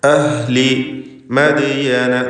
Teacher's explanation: ദാലിൻ്റെ സുക്കൂൻ ഖൽഖല സുഗ്റ നൽകി ശബ്ദം ചലിപ്പിക്കുക